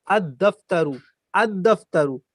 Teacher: تو الف پڑھا جا رہا ہے، اس کے بعد الف کے بعد لام کو چھوڑ دیا جا رہا ہے، لام کا تلفظ نہیں ہوگا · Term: دال پہ تشدید